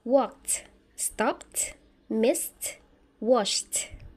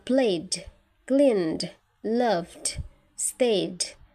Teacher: dibaca dengan suara lebih berat atau voiced, d, jika bertemu dengan huruf-huruf berikut.